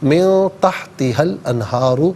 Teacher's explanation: یہاں من میں نون ساکن ہے، اس کے بعد تا ہے تو نون ساکن پر یہاں اخفا کریں گے